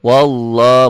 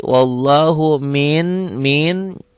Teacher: lafaz Allahnya dibaca tebal karena sebelum lafaz Allah baris atas. Wallah mad asli, wallahu min tuh.